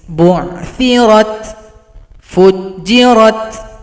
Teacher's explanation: Huruf ta jangan lupa diberikan sifat hamas.